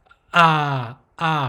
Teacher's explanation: ah has a glottal stop like you you can feel the vocal chords closing ah right it opens up right ah ah right this one